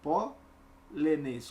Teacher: Qual é a sílaba tônica é a antepenúltima